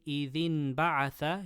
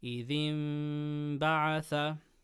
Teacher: You just ever so slightly touch your lips and you make a gunnah. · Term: ikhfa shafawi